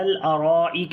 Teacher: را کو موٹا پڑھیں گے، لمبا بھی کریں گے، یہاں پر مد متصل ہے، کاف کو باریک پڑھیں گے.